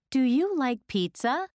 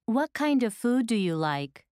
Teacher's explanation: notice the rising intonation at the end of yes no questions then notice the falling intonation at the end of wh questions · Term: question intonation